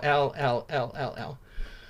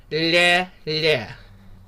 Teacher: When we soften it, what literally happens is the tip of your tongue goes to the middle of your hard palate and then slides to the front of your mouth.